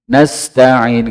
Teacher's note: di antara huruf ta dengan ain, ta'in itu jangan ada jeda